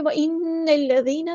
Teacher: یہاں پہ دیکھیں وَإِنَّ الَّذِينَ، نون پہ غنہ زمانی ہو رہا ہے، الف کے برابر رکیں گے، نون کو ہم نے لام کے ساتھ ملا دینا ہے، حمزۃ الوصل ہمارا ڈراپ ہو جائے گا، دال باریک لائٹ لیٹر ہے، نرمی سے ادا کرنا ہے.